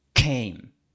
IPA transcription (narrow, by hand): kʰejm